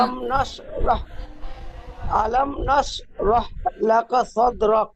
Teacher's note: রয়ের উপর জাবার আছে, তাই রকে পুর করে পড়তে হবে